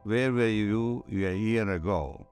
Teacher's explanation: But if you're speaking continuously, there's a famous sentence, where were you a year ago? There are no stops, no fricatives, no nothing. It's all vocalized sounds. There's no way to say where one word ends and where the other one begins.